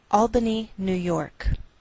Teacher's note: we treat New York as one word, and we place more stress on the second part, York.